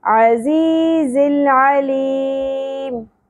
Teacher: لاسٹ الفابیٹ ہمارے پاس کیا ہے حرف مدہ تو یہاں پر ہم مد عارف وقف ہی کریں گے تین الف کے برابر کھینچنا ہے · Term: مد عارض وقفی